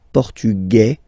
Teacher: Masculine, portugais, you don't pronounce the S